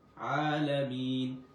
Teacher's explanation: এখানে আবার এক আলিফ টানছি। লামিন লামিনের শেষে তিন আলিফ টান হবে।